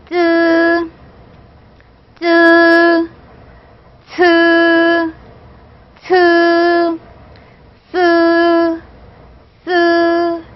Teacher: 혀 끝을 윗니빨에 대면서 내는 소리예요. 입천장 가까이에서 내는 소리죠. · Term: 설치음